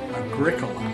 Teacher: it has four syllables and is accented on the second syllable much like curriculum